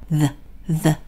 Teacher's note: 혀를 살짝 깨문 상태에서 디귿 소리가 나야 돼요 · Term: 돼지꼬리 발음